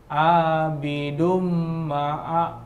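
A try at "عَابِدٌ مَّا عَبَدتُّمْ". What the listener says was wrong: Tahan dumnya. Ingat mim yang bertasydid.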